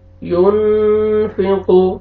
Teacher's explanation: اخفا نون ساکن کے بعد فا آ رہا ہے حروف اخفا میں سے یہاں پہ اخفا کریں گے ناک میں آواز لے کے جائیں گے